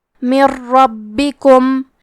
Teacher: کلمت ربکم را حروف الادغام بغیر غنہ میں سے ہے تو ہم نون ساکن کو را میں ملا کے بغیر غنہ سے لیکن تشدید کے ساتھ یہ حکم کو ادا کریں گے · کیونکہ را پہ تشدید زبر کا ہے تو ہمیں حرف را کو موٹی آواز میں پڑھنا ہے. با پہ تشدید ہے لہذا 2 حرف کے برابر با کو پڑھیں گے کیونکہ تشدید کی اصلیت 2 حرف ہے.